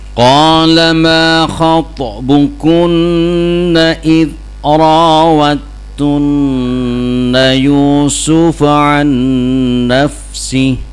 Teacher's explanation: Jadi makhraj dalnya masuk ke ta ada tasdid ya jangan dibaca idrad tunna ya.